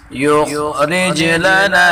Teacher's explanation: خا کو اوپر پڑھیں گے اور جیم میں قلقلہ کریں گے